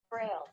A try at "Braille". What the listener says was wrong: Braille, not Braille. So it's just Braille. This is British pronunciation. Just Braille only. So no Lee at the back. So just Braille only.